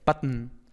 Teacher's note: En button, pues el núcleo de la segunda sílaba es esta N, que, bueno, es el núcleo. Es decir, la O realmente no suena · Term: sonantes silábicas